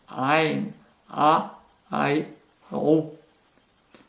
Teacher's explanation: un R qui vient du fond de la gorge.